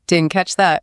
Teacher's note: Native speakers rarely say did not, and they barely pronounce the T at the end of didn't. Yeah, it gets trapped in the throat. What's called a glottal stop. It sounds more like did in didn't catch that.